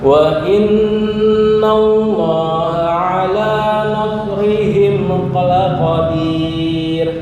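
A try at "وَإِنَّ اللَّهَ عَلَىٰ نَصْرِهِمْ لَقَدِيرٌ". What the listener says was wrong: Desisnya kurang keluar, masih tertahan. Nas. Yang ujung di sini. Nas. Nah, ininya naik.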